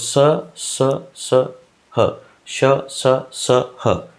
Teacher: हवा घर्षण के कारण ऊष्म होकर मुख विवर से बाहर निकलती · स ह का उच्चारण करते समय कंठ छिद्र संकीर्ण हो जाता है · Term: उष्म व्यंजन